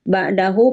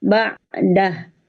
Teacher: Ba'dahu panjang ketika disambung atau membacanya dilanjut, tapi ketika berhenti menjadi pendek. Ba'dah. Nah, kalau wakaf ya pendek ya. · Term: mad silah qasiroh